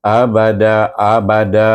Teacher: lam yaamanya wasal tapi kita baca kita wakaf kita kita baca tukarkan baris dua kepada baris satu dibaca dengan mad Iwat dua harakat